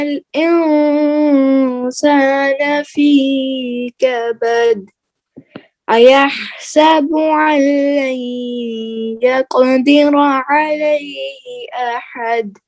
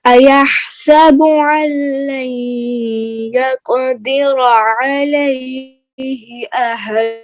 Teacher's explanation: جتنے بھی دال آ رہے ہیں نا آخر میں، آپ اس کو قلقلہ نہیں کر رہے، قلقلہ کیجئے نا